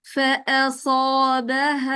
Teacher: حمزہ باریک رکھیں گے، اکثر بہنوں کی حمزہ موٹی ہو جاتی ہے